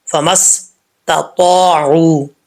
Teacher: الف زبر تو، ایک الف کی مقدار لمبا کریں گے اور تا حروف مستعلیہ میں سے اس کو پر پڑھیں گے، موٹا پڑھا جائے گا